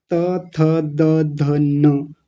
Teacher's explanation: त, थ, द, ध, न, ऊपर वाले दांतों से लगती है ना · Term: दंतीय वर्ण